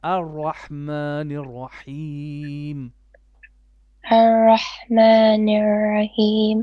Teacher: Make your ra more heavy and with a bit of tikrar.